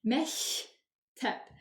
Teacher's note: Məktəb sözündə K hərfi sözün ortasında gəlib deyə uşaqlar. K hərfi keçir X səsinə. Olur məktəb.